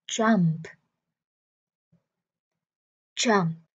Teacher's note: Phía cuối mình có P. Vì vậy các bạn nhớ bật âm cuối ra nha